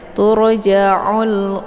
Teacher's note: namanya alif lam alqamariah sama pembahasan sepertialr ya Ada alif lam sesudahnya terdapat huruf qamariah yaitu Alif ataupun Hamzah dibaca Alif lamnya secara jelas